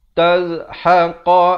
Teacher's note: Qa ni makhrajnya di pangkal lidah.